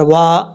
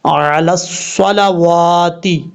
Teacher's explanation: واو کو پڑھتے وقت ہونٹ گول کریں گے، اور یہی اس کا مخرج ہے واو کا